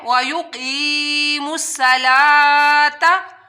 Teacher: بھی پڑھنا ہے اور مد بھی کرنی ہے، وایو قیموا الصلاۃ، صاد حروف مستعلیہ میں سے ہے، موٹا حروف ہے اور صاد کی آپ لوگوں نے سیٹی بھی نکالنی ہے